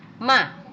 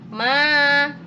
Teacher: kalau fathah saja dibacanya Ma tapi kalau diikuti Alif jadi panjang ma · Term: bacaan mad